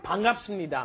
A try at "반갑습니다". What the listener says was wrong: Okay, the lips kind of have to close.